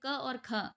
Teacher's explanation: प्रत्येक वर्ग का पहला और दूसरा, जैसे क और ख अघोष कहलाएंगे